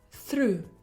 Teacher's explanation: You start with the sound th. Your tongue is relaxed. And to produce it, you need the flow of air. Now, as you move from the th sound to the next sound, try flapping your tongue against the alveolar ridge.